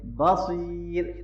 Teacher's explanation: صاد کو موٹا پڑھیں اور یا مدہ ہے